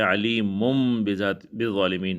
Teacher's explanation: یہاں پر نون تنوین کے بعد با آیا ہوا ہے تو ہم نون تنوین کو با سے بدل لیں گے، تو علیمم، یہ میم سے جب بدل لیں گے، نون تنوین کو میم سے تبدیل کر لیں گے تو یہ علیمن کے بجائے علیمم بالظالمین پڑھیں گے